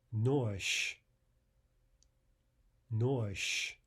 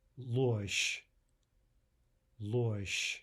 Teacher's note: There again is the devoicing of zh to sh.